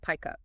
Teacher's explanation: It sounds like pikeup. The K sound at the end of pick links smoothly to the vowel sound at the start of up. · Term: consonant to vowel linking